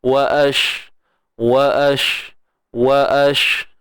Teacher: Dan huruf shin ni kita tahu dia ada sifat tafashi kan. Sifat tafashi iaitu berhemburan.